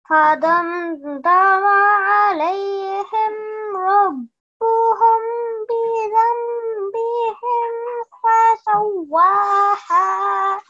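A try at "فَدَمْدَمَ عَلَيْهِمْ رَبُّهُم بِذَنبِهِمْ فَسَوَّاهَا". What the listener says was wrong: Very, very good effort. Excellent. Well done.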